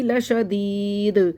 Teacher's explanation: دال پہ قلقلہ کریں گے